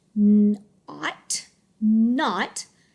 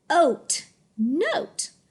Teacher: It's going to change the vowel from a short O, which says ah, to a long O, which says O. So if I get my sneaky E, now my word is n-oat, note.